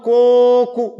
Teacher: Olha o coco, demora mais tempo nesse primeiro co aqui. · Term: paroxítona